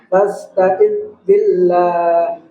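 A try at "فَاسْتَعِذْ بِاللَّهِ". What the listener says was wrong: Ya, jadi zal jangan dikol-kolah. Iya, jadi dia mengalir, dia rakhawa dia. Fasta'iz billah, fasta'iz billah, fasta'iz billah.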